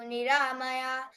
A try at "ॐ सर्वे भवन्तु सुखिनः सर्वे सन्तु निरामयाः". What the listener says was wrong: Niramayaha. Visarga should be recited here. Niramayaha.